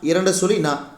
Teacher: நாவின் நுனி மேல்வாய் பல்லின் அடிப்பகுதியை தொடுவதால் பிறக்கும் எழுத்து